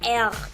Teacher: El sonido proviene detrás de la garganta y esta es la R que se usa con más frecuencia. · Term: R francesa